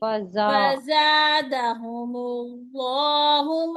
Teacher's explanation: इसमें जा में सिटी की साउंड आएगी